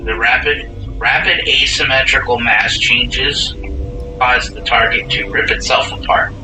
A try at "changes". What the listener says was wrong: Mass changes cause. When you're first trying to read it, you said change cause, not changes.